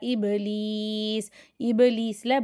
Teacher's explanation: இபலீஸ்ல பாசுகூன் கல்கலா அசைச்சு உச்சரிச்சு ஓதணும்